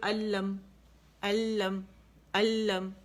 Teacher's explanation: ادغام تام بلا غنہ, بغیر غننے کے